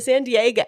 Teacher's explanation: That's a fronted back vowel, which is also a part of the California vowel shift.